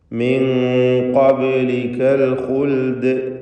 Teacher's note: അന്ത്യത്തിൽ വന്ന ദാഇൽ സുക്കൂനാണ് വരുന്നത്. ദാലിന് ഖൽഖല കുബ്ര നൽകി വഖഫിൻ്റെ സന്ദർഭമായതുകൊണ്ട് വളരെ വ്യക്തമാക്കി അതിൻ്റെ സുക്കൂൻ കേൾപ്പിച്ചുകൊണ്ട് വഖഫ് ചെയ്യണം